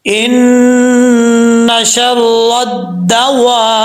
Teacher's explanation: بیچ میں الف لام گر جائے گا جب دال کے ساتھ ملائیں گے